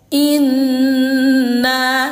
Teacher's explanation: dengung ataupun suara ditahan didengungkan dua harakat atau dua ketukan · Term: ghunah musyaddadah